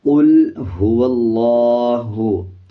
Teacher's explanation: قاف کو موٹا پڑھا جائے گا اور لام کے اوپر جزم ہے، قوف کو لام کے ساتھ ملا کے پڑھا جائے گا۔